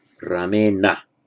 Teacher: But with Rama would be Ramena, because with the r there, taking the n retroflex, and the m not being a letter that causes you to shift the position of the tip of your tongue, does not block the retroflexing effect